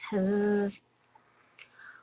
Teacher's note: when you say Z in English, the sound just comes from the front of your mouth